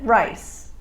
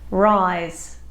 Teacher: the S sound in rice has no vocalization. The Z sound in rise does. This means in the New York accent, because S has no vocalization, this word will be pronounced as you or I might pronounce it, rice.